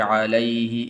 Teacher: ہاں کو لمبا نہیں کرنا علیہ ایسے نہیں پڑھنا